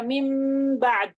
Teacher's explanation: Ikhfa dalam artian gunnahnya ditambah.